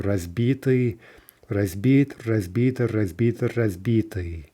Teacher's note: we see generally the stress is sticking in the short forms where it was in the long forms